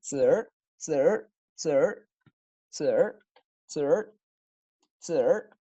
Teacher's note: Ahora le agrego la retroflexión vocálica